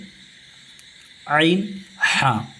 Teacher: بیچ حلق سے ہم عین ہا